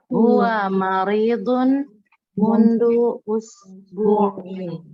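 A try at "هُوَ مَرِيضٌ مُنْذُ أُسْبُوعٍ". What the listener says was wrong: Mundu pakai zal ya, bukan pakai dal. Mundu, mundu. Mundu.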